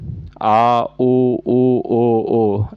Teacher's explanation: पश्च स्वर है, जीभ के पीछे का भाग उठता है, जैसे कि आ उ ओ।